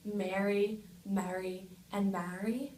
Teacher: Mary southern English merges these vows but um in regions of New England and then in Philadelphia and New York City there's very distinct Productions of each word so they don't merge